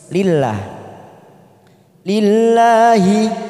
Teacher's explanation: Lillahi lah kita panjangkan 2 harokat. Ini namanya mat tabi'i muqaddar yang berdiri di atas lam jalalah.